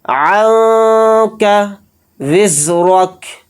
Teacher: دیں گے، زا کو سخت اور باریک پڑھیں گے یہاں پر، را کو یہاں پر موٹا یعنی پر پڑھیں گے اور جلدی پڑھیں گے ، کاف کو ساکن کر کے پڑھیں گے حالت وقف میں۔